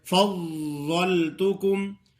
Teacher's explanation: ضاد کا مخرج آپ کو بتایا گیا تھا کہ اوپر والے 5 ڈاڑے ہیں، ان کے ساتھ زبان کا وہ کنارہ لگانا ہے جو گالوں میں چھپا ہوتا ہے۔ اس سے مراد یہ ہے کہ جڑ کی طرف والا کنارہ جو ہے نا، زبان کی جڑ کی طرف والا کنارہ، اس کو حافہ بھی کہتے ہیں، وہ حافہ لگانا ہے جو گالوں میں چھپا ہوا ہوتا ہے۔